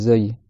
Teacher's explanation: après le zaï c'est un peu comme le Z en français c'est une lettre qui siffle zaï c'est un sifflement léger mais ça siffle quand même